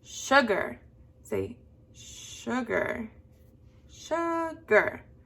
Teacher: you'll notice that the part that your voice went up is on the first syllable